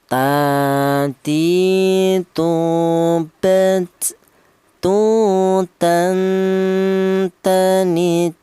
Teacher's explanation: huruf ta, keluarnya huruf berasal dari ujung lidah menyentuh pangkal gigi seri bagian atas